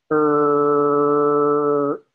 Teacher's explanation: I use the tip of the tongue toward the roof of my mouth and get the sound er. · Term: retroflex